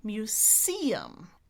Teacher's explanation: they did it with a S as in a snake, muSeum.